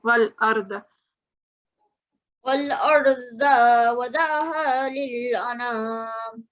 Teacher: You did have a bit of a galgala here, whereas lam is not a galgala letter, and we've got a sakoon, so it's just simply wal